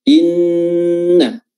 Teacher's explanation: yang sukun ini dileburkan, dimasukkan, diidghamkan ke huruf nun yang fathah. Akhirnya nun yang fathahnya pun menjadi bertasydid. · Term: idgham mutamathilain